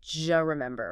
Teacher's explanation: What happens is assimilation and reduction combined. The D sound at the end of do and the J sound like Y in yes at the beginning of U often merge together.